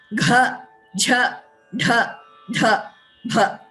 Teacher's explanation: So when you pronounce these, you realize that you're actually, the exhalation, the expulsion of air is coming from deeper than kha, cha, tha, tha, pa. So you're actually taking more effort, if I may say so, in pronouncing the fourth letter of each varga. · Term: Ghosha